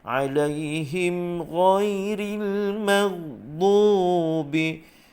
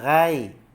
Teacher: huruf ghain baris atas tebal, bunyinya tebal, isti'la